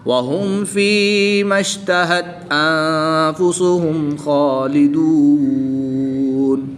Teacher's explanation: نون ساکن کے بعد فا حروف اخفا میں سے ہے تو یہاں پر اخفا ہوگا یعنی غنہ زمانی کر کے پڑھیں گے